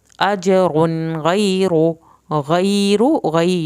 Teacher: غی یا ساکن کی وجہ سے کھینچیں گے